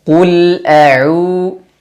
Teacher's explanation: makhrajnya tempat keluarnya dari Tengah tenggorokan wasatul halq au u dan dipanjangkan dua harakat karena ada wau sukun setelahnya · A'u, ain jelaskan, dan dia berharokat dhammah, maka monyongkan mulut.